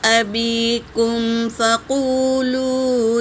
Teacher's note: میم ساکن کے بعد فا آیا ہے تو یہاں میم کا اظہار ہوگا، اظہار شفی ہوگا